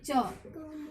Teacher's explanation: च में हमारी जिह्वा तालु को स्पर्श करती हुई बाहर निकलती है। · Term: च वर्ग